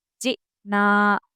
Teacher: तो जब हमज़ा के ऊपर जज़म लगाएँगे तो हम वहाँ पर झटका लगाएँगे, ताकि अलिफ़ समझ में आए हमें।